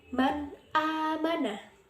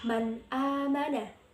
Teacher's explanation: nun sukun bertemu dengan hamzah maka dibaca jelas, tidak samar sama sekali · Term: izhar halki